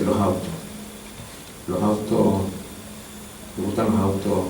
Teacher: Es interesante cómo allí ese codal final de palabra se realiza como aspiración.